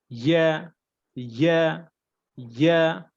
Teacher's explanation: জিহ্বার মধ্যখান বা উপরে তালু হতে ইয়া